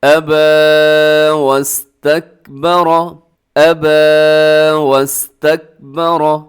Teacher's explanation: را کے اوپر حرکت ہے تو را کو اپنے موٹا پڑھنا ہے۔ واستکبر، کاف کو ہلانا نہیں ہے، کیسے لوگ ہلا دیتے؟